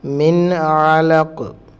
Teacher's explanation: ഈ നൂനിനെ നമ്മൾ വ്യക്തമാക്കി പറയണം, കാരണം നൂനിന് ശേഷം വരുന്നത് ഹൽക്കിൻ്റെ അക്ഷരങ്ങളാണ്, തൊണ്ടയിൽ നിന്ന് വരുന്ന അക്ഷരങ്ങളാണ്. അലഖ് എന്നുള്ളത് തറപ്പിച്ച് പറയുക.